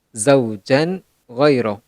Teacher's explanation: Maka hukumnya akan menjadi hukum izhar halqi dan cara bacaannya dengan JSD, jelas dan tak dengung.